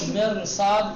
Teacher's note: را ساکن ہے، اس کے بعد حرف استعلاء آ گیا ہے، اس لیے را کو تفخیم کے ساتھ پڑھیں گے